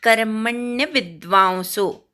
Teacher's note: कर्मण्य विद्वांसो कवर आघात, म वर आघात, वी वर आघात, कर्मण्य विद्वांसो वाव असा उच्चार होतो, औ उच्चार होतो.